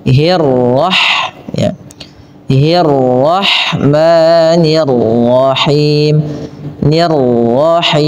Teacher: pada lafal arro tebalkan huruf rnya